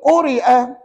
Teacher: huruf ya ni tak diguna pakai dalam bacaan. Itu sebab kita baca pendek.